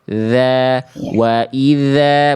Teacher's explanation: Ketika ujung lidah disentuhkan dengan ujung gigi sari atas dari huruf zal, harusnya dia ngalir.